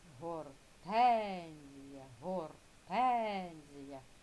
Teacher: наголошений склад тен. Да, з більшої сили голосу вимовляється. Тому зверху поставили ось таку рисочку.